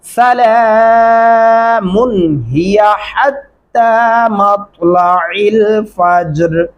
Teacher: اس میم کے اوپر آپ غنہ نہیں کریں گے، غنہ نہیں ہوگا